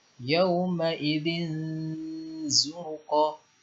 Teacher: Jadi ada dengungnya, ya. Dengung kemudian dibaca dengan samar. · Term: ikhfa